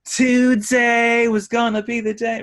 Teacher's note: I mean, it comes out right at you. He over aspirates his T's and D's.